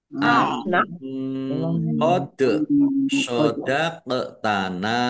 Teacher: Wa na'lama ain wa na'lama an qad sadaqtana qad nun sukun dal sukun bacaan qalqalah an qad sadaqtana nun sukun bertemu dengan huruf qaf bacaan ikhfa dibaca samar-samar